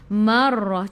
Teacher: Ra kena ada getaran sebab ra sifat hurufnya takrir. Marrah. Cuma janganlah kita getar tu terlalu kata kuat nah.